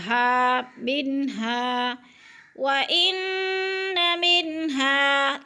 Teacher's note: हा पे जो है ना अलिफ मद्दा है, अलिफ खाली से पहले ज़बर हो तो अलिफ मद्दा 2 हरकत के बराबर खींच कर पढ़ना है